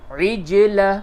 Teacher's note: عین جیم زیر عج، جیم میں قلقلہ کیجئے اور عین کو حلق سے نکالیے